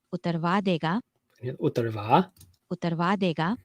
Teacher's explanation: the speaker waits until that last syllable to actually start rising in pitch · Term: late rise